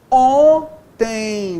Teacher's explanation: On, mesmo nível, beleza, só nasalizou a vogal anterior. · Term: dígrafo vocálico